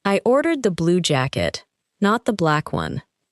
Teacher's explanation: The strongest words are blue and black because the speaker is correcting a detail. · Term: sentence stress